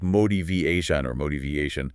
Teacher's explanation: The t often has a soft d sound or a quick flap sound when it falls between two vowel sounds like it does here.